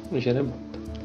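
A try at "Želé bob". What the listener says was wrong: Má tam l, to není. Žele bob.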